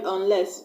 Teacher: So I'm not going to stress on the prefix U-N, rather I'm going to stress on the second syllable L-E-S-S.